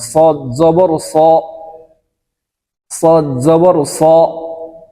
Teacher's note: সদ উচ্চারণ করার সময় একটু মোটা করে উচ্চারণ করতে হবে